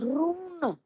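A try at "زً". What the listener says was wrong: not raw. It's za.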